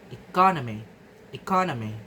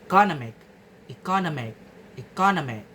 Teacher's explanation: The stress shifts from the second syllable, ka, to the third syllable, no. The suffix ig moves the stress to a completely different position in the word.